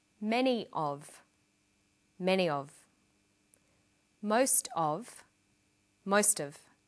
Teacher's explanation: Notice that of in these phrases is unstressed.